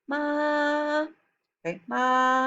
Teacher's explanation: The first tone is high and level tone. It is steady and it is the highest of the four tones. It is important to maintain the pitch level from the beginning to the end of the syllable.